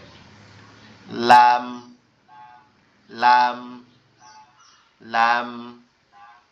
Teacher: জিহ্বার আগাটা শুধু উপরের তালুর সাথে লেগে স্বাভাবিকভাবে উচ্চারিত হবে